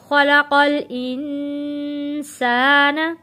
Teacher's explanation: نون ساکن ہے، نون ساکن پہ غنہ ادا کرنا ہے